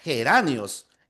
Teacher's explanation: en geranios, eso es como una J. Geranios. Y no es oclusiva, es una fricativa. Geranios. Para que sea oclusiva tendría que ser geranios.